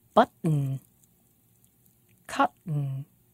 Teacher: When the word has a T, a T, and a vowel, and an N, N at the end, we make a glottal stop and we don't say the vowel at all